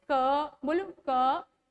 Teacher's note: कै वर्ग का उच्चारण स्थान है कंठ, बोले तो गला